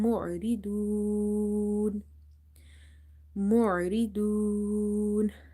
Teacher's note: Ayn is from the middle of the throat as it's from the halki letters. And the word do, because waw is madda here, and after that we are making noon silent by ourselves.